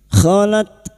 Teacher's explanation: Qod qod kholat ta sukun. Huruf ta ini memiliki sifat hames dan syiddah.